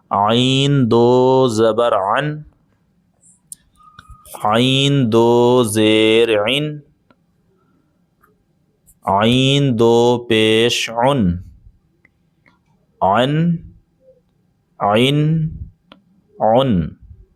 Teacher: یہ ہے عین جس کو ہمیں حلق سے ادا کرنا ہے، یہ حروف حلقی میں سے ہے